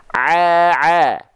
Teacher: Ain dan ha kecil dilafalkan dari bagian tengah tenggorokan kita